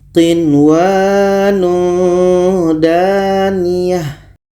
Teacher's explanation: Dikarenakan ini hukumnya izhar wajib, maka nun jelas, waw jelas, dan tidak boleh dengung